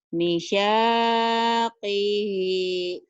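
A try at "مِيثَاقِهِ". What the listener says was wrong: Mi-nya panjang, Bu. Misaki. Lagi, Bu.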